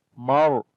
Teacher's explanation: this Ra we read in heavy sound because the Ra has a Sukun sign on it. And before the Ra there is this Fatha.